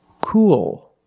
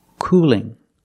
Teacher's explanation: cool has a dark L at the end but cooling has a light L